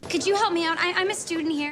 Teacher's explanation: listen to this j sound that emerges in the combination of the letters D and Y